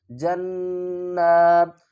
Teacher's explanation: آگے دیکھیں جیم کو نون سے ملائیں گے، پھر نون مشدد ہے، اس کے اوپر کھڑا زبر ہے، ایک الف کی مقدار کھینچ کر بھی پڑھیں گے اور غنہ بھی کریں گے۔ جیم نون زبر جن، نون کھڑا زبر نہ، جنات، تا دو زیر تین۔